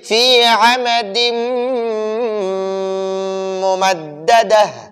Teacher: ینمو میں ادغام مع الغنہ ہوگا اور لر میں ادغام بلا غنہ ہوگا۔ تو ادھر تنوین کے بعد یرملون میں سے میم آیا ہے تو اب ہم ادغام مع الغنہ کریں گے، ادغام اور غنہ ساتھ کریں گے، دونوں ایک ساتھ کریں گے، تو ہم پڑھیں گے فی عمد ممددہ، ممددتن ہے لیکن آیت پر وقف کی وجہ سے گولتا ہا ساکنہ ہو گئی، تو ہم پڑھیں گے ممددہ۔